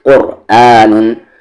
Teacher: اسی طریقے سے قو کو را میں قرآن، قرآن نہ کہ قرآن، را کو ہیوی کریں گے، قاف تو ہیوی ہے ہی، اس را کو بھی ہیوی کریں گے